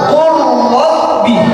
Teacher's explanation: langsung lamnya hilang masuk ke dalam huruf ro